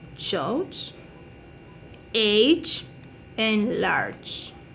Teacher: It's a consonant characterized as having both fricative and stop manner production. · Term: affricate